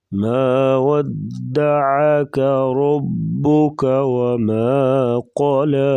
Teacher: عین کی آواز گلے سے نکالیں گے۔